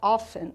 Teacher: o often, pessoal, ele tem a pronúncia com esse T mudo, que a gente chama de silent letters em inglês.